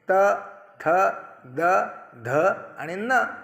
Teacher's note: दाताचा स्पर्श होऊन ज्या वर्णांचा उच्चार होतो त्याला दंत्य म्हणतात